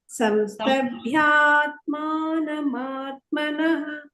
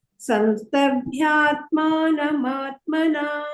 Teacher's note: ಅಲ್ಲಿ ಭ್ಯಾ ಅಂತನೂ ದೀರ್ಘ ಇದೆ, ಮಾಗೂ ದೀರ್ಘ ಇದೆ, ಮತ್ತೆ ಮಾಗೆ ದೀರ್ಘ ಇದೆ, ನಾ ದೀರ್ಘ ಇದೆ